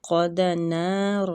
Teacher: قاف مستعلیہ حروف ہے، اس کو پور پڑھنا ہے، نا کے آگے الف مد ہو رہی ہے، اس کو کھینچنا ہے، را بھی پورا ہے زبر کی وجہ سے۔